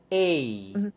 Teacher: start closer to e and then allow the tongue to come up